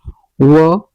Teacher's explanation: व दंत ओष्ठ से निकलता है।